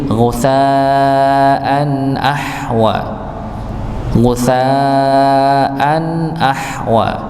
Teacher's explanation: idhar dengan tanwin bertemu dengan hamzah atau dengan yang lainnya, maka tetap ada dengung sedikit, ada aliran sedikit.